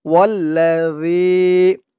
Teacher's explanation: আর এখানে জালের আওয়াজটা একদম নরম পাতলা করতে হবে। জিহ্বার মাথা উপরের দাঁতের মাথার সাথে লাগবে এই জালের উচ্চারণটা করার সময়।